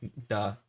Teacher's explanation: it's normally between like sort of like an l and an r and a little bit of a d it's like in that range yeah when they pronounce it like